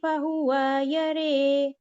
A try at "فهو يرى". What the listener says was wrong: فہو یرے واؤ واؤ لمبی ہو گئی.